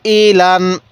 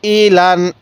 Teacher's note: আইনটা উচ্চারণের সময় গলার মধ্যে হালকা চাপ দিতে হবে